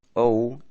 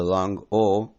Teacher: O as in toe completely monophthongized into the long o as in stone.